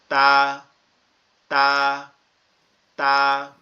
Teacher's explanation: আমাদের জিহ্বার আগা, উপরের দুইটা দাঁত, এই যে উপরের যে দুইটা দাঁত বাচ্চাদের আগে উঠে, এই দুইটা দাঁতের গোড়ায় লাগবে, মানে উপরের সাইডে লাগবে একদম, যে যে অংশটা আমাদের গালের মধ্যে লেগে আছে গোড়ায় লাগবে।